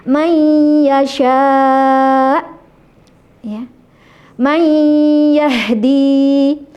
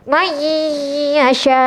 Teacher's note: sebagian di mulut eh sebagian ke hidung dan disempurnakan di mulut ya. Nisfu mukammal ya wa mukamil gitu ya. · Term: Idgham bighunah